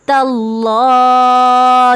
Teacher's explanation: تا پہ زبر ہے اللہ کے لام سے پہلے اس لیے اس کو موٹا پڑھیں گے